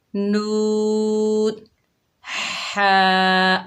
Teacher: ہا کو حلق کے درمیان سے ادا کیجئے